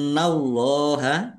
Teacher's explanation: nun tasdid bacaan ghunah atau mendengung. Ditahan biar tampak mendengungnya.